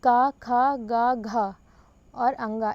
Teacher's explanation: का वर्ग के सभी वर्णों का उच्चारण कंठ से होता है